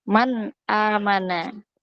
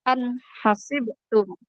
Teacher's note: tidak didenggungkan tidak disamarkan nunnya dibaca n jelas